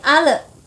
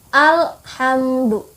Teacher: maka alif lam komariah dibaca dengan jelas tanpa ada pantulan apapun. Tidak boleh menjadi ale, tidak boleh.